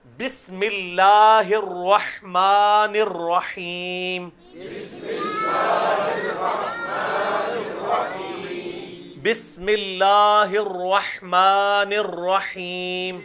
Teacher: یہاں پہ اللہ کی لام جو ہے باریک پڑی جائے گی